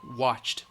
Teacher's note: watched, ch, ch, ch, it's voiceless. So the ED is going to sound like a T